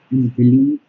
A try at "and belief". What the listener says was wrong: I'd like you to enunciate AND a little more clearly. And, yes, you say and belief. No, and belief, and belief.